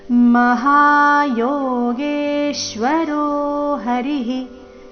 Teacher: ಯೋಗೇಶ್ವರೋ ದೀರ್ಘ ಹೇಳಿ ನಂತರ ಅದರ ಮೇಲೆ ಆಘಾತ · ವಿಸರ್ಗದ ಉಚ್ಚಾರಣೆ ರಸ್ವ ಹಿ.